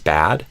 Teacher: trap is the more open sound